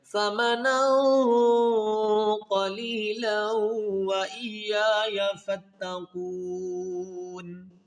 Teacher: نون ساکن کے بعد حروف اخفا میں قوف ہے، تو یہاں پر اخفا مال غنہ کیا جائے گا